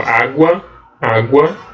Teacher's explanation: O U é uma semivogal aqui, ó, água, água, ó, o U a gente pronuncia ele, mas bem rapidão